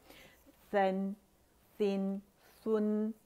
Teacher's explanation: सीन की आवाज़ whistling sound नहीं आनी चाहिए